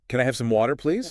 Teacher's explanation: focus on that rising intonation at the end to make it a polite request